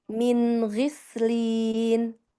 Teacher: Jadi sinnya tidak ikut menebal, tidak gis ya.